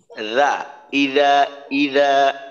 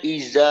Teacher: জাল বলার সময় জিহ্বার আগাটা সামনের উপরের দুই দাঁতের আগার সাথে লাগানোর চেষ্টা করবেন। রা, ইদা, ইদা, এখানে যেন ইজা এই ধরনের না হয়।